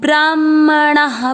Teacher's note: ब्राह्मणा के बाद में जो विसर्ग है, आ की मात्रा के कारण हमने विसर्ग को हा पढ़ा है।